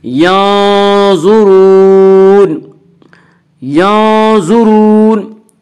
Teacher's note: زوا کو پر پڑھیں گے، زوا حروف مستعلیہ میں سے ہے، حروف مستعلیہ 7 ہیں جن کا مجموعہ خصہ ضغط قز ہے، جو ہمیشہ ہر حال میں پر پڑے جاتے ہیں۔